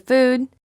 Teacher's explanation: ooh is a tense sound the lips are rounded and tense